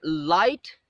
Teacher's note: the tip of the tongue touches the alveolar ridge, but the air passes from the sides of the tongue. The air is released from the sides of the tongue, so there is no complete closure of the air. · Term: lateral liquid